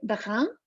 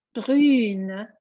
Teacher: And if it's feminine, it will be brune, it's much longer. And the E makes the sound much longer.